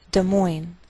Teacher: we treat the name of this capital like one word, and the greater stress is on the second part